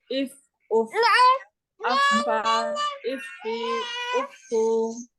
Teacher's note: Dan memiliki sifat hams, yaitu nafasnya berhembus, mengalir, dan dia rohowah.